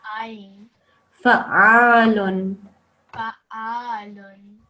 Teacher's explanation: the ain comes deep down from the throat. So that makes a very thick sound.